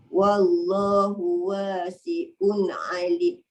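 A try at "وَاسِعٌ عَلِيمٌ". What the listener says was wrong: Dia baru jadi ain. Kalau wasi'un dia jadi hamzah.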